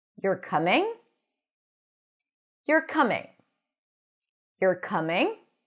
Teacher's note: If I go up at the end, you're coming, that sounds more like a question. So when the pitch goes up at the end, it is more associated with a question or something that is uncertain